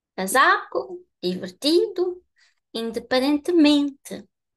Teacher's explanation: So the penultimate syllable is the highest. So if you see the word written down, and you know that the rule is the highest is the penultimate syllable, now you can think, I think this is the one that they are going to pronounce.